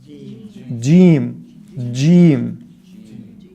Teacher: You can keep saying that one, but that is an incorrect jim. The proper Fusha Arabic jim has a d sound at the beginning of it, right? It has a dal sound at the beginning.